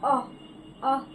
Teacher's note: अ, तो कंठ से निकलता है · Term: कंठे वर्ण